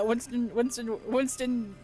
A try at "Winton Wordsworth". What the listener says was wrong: No, but you're not Winston.